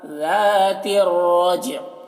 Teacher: ذال پہ دھیان دیجیے، آواز دیکھیے اس کی کتنی باریک ہوتی ہے